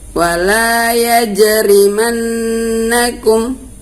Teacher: yang merupakan huruf qalqalah di sini adalah pada huruf jim matinya. Ya, jadi kita bacanya harus memantul.